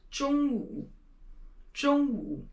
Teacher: make sure that you do roll your tongue when you're saying 中.